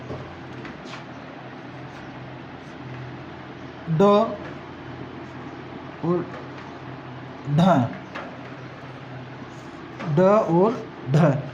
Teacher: उत्क्षिप्त का अर्थ होता है फेंका हुआ, फेंका हुआ, अर्थात ढ और ढ इन दोनों व्यंजन वर्णों या व्यंजन ध्वनियों का जब उच्चारण किया जाता है तो जीवा का अगला भाग मूर्धा से टकरा करके, स्पर्श करके झटके के साथ नीचे गिरता है। इसलिए इन दोनों ध्वनियों को उत्क्षिप्त व्यंजन कहा जाता है।